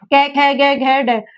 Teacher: जो कि गले से इसका जो गले से उच्चारण होता है। हम बोलते हैं तो गले से निकलती है। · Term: कंठ्य